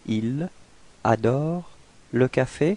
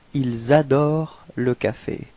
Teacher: it's possible to make this small link between the S and the A. So actually liaison means link.